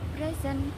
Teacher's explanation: stress can change the meaning of of a word for example present as a gift is stressed on the first syllable well present meaning to be in a PL is stretch On